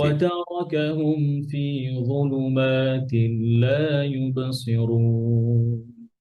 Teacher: মিম সুকুনের পরে ফা, যেটা মিম সুকুনের ইজহার